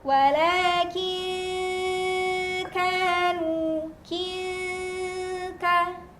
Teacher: Nah, ini bunyinya cukup jauh juga ya sahabat, karena dari makhraj nun sukun ke makhraj kaf, makhraj huruf kaf ada di bagian pangkal lidah ya, di belakang.